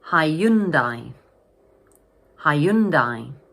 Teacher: So this word has three syllables and the middle syllable is stressed.